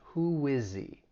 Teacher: So that H is going to elide, and then we can link that D sound. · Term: elision